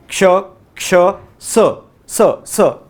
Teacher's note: उष्म म्हणजे त्या वर्णांचा उच्चार करताना उष्णता किंवा घर्षण झालं पाहिजे. जसं क्ष, क्ष, स, स, स, याच्यात घर्षण होते. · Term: उष्मे व्यंजने